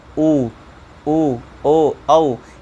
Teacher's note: ये जिह्वा का पिछला भाग इस पे सक्रिय रहता है, तो इसलिए इसको कौन सा स्वर कहेंगे? पश्च स्वर कहेंगे।